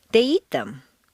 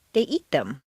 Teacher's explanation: when you replace the nouns with pronouns old information stress the verb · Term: statement intonation with pronouns